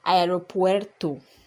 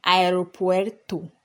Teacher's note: The vowels are pronounced separately.